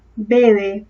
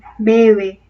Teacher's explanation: En la primera sí tocan los labios, pero en la segunda no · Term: aproximante